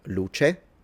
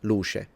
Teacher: When in Italian it's pronounced as a ch, we turn it into a sh.